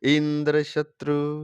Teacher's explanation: बहुव्रीहि समास वाले इंद्र शत्रु शब्द का उच्चारण आद्योदात होगा, अर्थात लास्ट में धीरे हो जाएगा। प्रथम ई का उच्चारण करना, ई का उच्चारण उदात स्वर से होगा, इंद्र शत्रु, तो उसको लास्ट में धीरे हो जाएगा। · और बहुव्रीहि समास वाले इंद्र शत्रु शब्द का उच्चारण आद्योदात होगा, अर्थात लास्ट में धीरे हो जाएगा। प्रथम ई का उच्चारण करना, ई का उच्चारण उदात स्वर से होगा